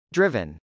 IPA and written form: drˈɪvən (driven)